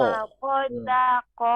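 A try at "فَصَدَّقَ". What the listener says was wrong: Bibirnya ya, jadi jangan maju. Perhatikan ya, kalau misalnya kita dari samping ya, nanti terasa si bibir tuh tidak ada terbuka.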